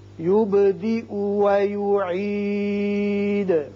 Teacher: با ساکن ہے، اس کی صفت قلقلہ ادا کریں گے